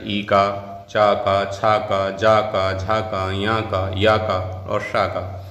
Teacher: ई का च का छ का ज का झा का ञ का याय का और स का इनका उच्चारण स्थान तालू है